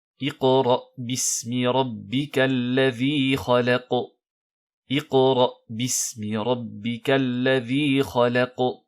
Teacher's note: il faut bien faire attention à garder un soukoun sur la lettre Qaf, et sur toutes les autres lettres également. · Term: petite résonance